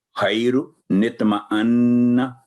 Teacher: لیکن اگر ملا کے پڑھیں گے تو نون قطنی سے پہلے جو حرف الف ہے جو آواز لمبی کر رہا ہوگا وہ ختم ہو جائے گا، سائلنٹ ہو جائے گا، آواز شارٹ ہو جائے گی اور نون کو ساتھ ملا کے پڑھیں گے